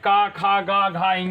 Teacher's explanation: का वर्ग का उच्चारण स्थान कंठ होता है बेटा